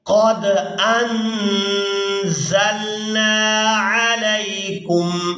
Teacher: یہاں دال ساکن پر قلقلہ کیا جائے گا